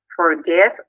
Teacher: el verbo forget tiene dos sílabas y la última sílaba es acentuada. Es decir, al pronunciarlo suena más fuerte.